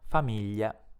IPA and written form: famiʎa (famiglia)